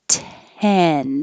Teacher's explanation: my tongue is in the same place for the T and the N